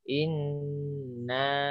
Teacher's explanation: Nunnya ditahan agak lama. Lebih dari 2 ketuk.